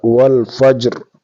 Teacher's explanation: جیم ساکن ہے جیم پر قلقلہ ہوگا